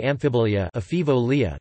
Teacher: The alveolar nasal /n/ is assimilated to following obstruents